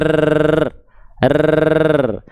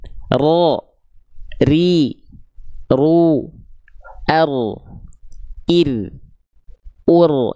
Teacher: Dia bergetar tapi bukan dengan getaran yang berlebihan. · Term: takrir